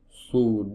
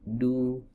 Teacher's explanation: huruf sad itu saat di domah itu kan tebal maka domahnya agak membulat su. Adapun domah yang ada pada huruf dal ini agak memipih